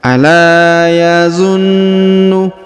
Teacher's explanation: Huruf na ditahan dan ditekan karena terdapat tanda tasdid.